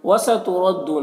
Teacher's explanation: را کے اوپر زبر ہے تو را کو پر پڑھیں گے، یہاں پر واو مدہ ہے، ایک الف کے برابر کھینچیں گے۔